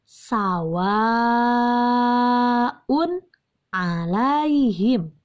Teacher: Nah, tanwin domatain bertemu dengan huruf ain, dan ain merupakan salah satu huruf izhar, maka cara membacanya dibaca jelas terdengar unnya